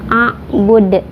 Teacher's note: kalau di akhir itu qalqalah kubro, jadi pantulannya besar karena ada huruf qalqalah yang disukunkan karena waqaf.